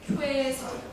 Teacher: 오로 시작하셔서 이로 끝나시면 되죠. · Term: 이중모음